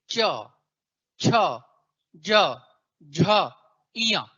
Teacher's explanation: देखिए पांचों बार आपकी जीभ किसको छू रही है तालू को छू रही है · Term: तालव्य